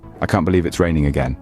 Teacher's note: my voice fell at the end showing frustration or disappointment